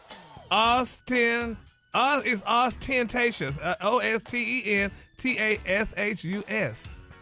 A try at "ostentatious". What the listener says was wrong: Yeah, you're saying it phonetically. You need to just say it in one. There's no pause. No, there's no pause in there.